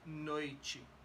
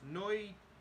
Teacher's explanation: A T and an I has a chi sound, not a T. No T is chi.